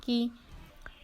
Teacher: زبان کے جڑ سے کیف ادا ہوتا ہے۔ کیف پر زیر ہے، نہیں کھینچیں گے۔